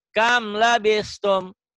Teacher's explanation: Kam labistum dibaca apa adanya. Kenapa? Karena mimati ketemu lam. Hurufnya hukumnya idhar. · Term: Idhar hukum mimati